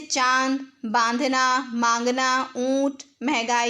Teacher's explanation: इसका उच्चारण नाक और मुंह दोनों से किया जाता है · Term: अनुनासिक